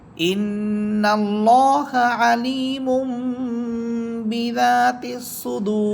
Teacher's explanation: দুই পেশ দুই পাশের পরে আসা বা হরফ এটা ইকলাবের হরফ তানবিনের পরে বা হরফ আসার কারণে এখানে তানবিনকে আমরা ছোট্ট মিম দ্বারা পরিবর্তন করে পড়ব